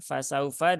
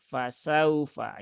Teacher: Nah, ini fasaufa ya, fasaufa di sini ada waw sukun yang didahului harokat fathah ya. Waw sukun yang didahului harokat fathah. Maka bacanya dia dilembutkan karena lin itu sifatnya lembut